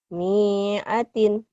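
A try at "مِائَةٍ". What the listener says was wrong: Nggak ada yang panjang. Iya, bukan pasangan ya. Ada pemanjang. Ada pemanjang tapi nggak pasangan jadi pendek.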